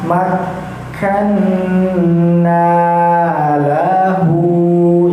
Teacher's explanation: Nah, itu juga salah. Karena kafnya yang berharakat fathah dan bertasdid itu tidak panjang